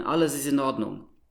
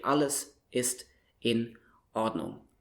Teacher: when you have a word starting with a vowel, in German you automatically add this Knacklaut in front of the word. Due to this, you speak the words one word clearly after the other. · And you need this Knacklaut, in each case before, in the beginning of the word, which is a boundary marker. So it marks, here starts a new word.